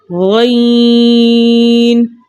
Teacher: ادنی حلق، یعنی حلق کا شروع حصہ